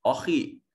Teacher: خا صفت استعلاء کی وجہ سے مفخم ادا کیا جائے گا۔ پر اور موٹے پڑھے جانے کے عمل کو مفخم، اس کے لیے ٹرم یوز کرتے ہیں مفخم، موٹا کر کے پڑھنا۔